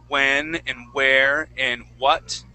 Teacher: pronouncing words that start with a W like when and where and what okay that you start out with an ooh sound